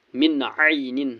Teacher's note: نون ساکن کے بعد عین ہے، عین حرف حلقی ہے اس لیے نون کو ظاہر کرنا ہے۔